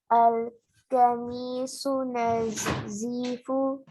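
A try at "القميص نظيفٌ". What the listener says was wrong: Nazifun. Tanween is there. Al kamisu nazifun.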